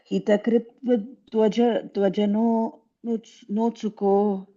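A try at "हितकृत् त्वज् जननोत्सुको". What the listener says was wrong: No, after that, each take a small pause. Hita krit twaj.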